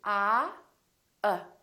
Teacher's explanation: My lips are neutral, They're not doing very much. And my tongue is also neutral in the back, Everything is relaxed. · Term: neutral sound